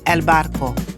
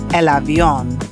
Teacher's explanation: the B or V will have a soft V sound when it comes between vowels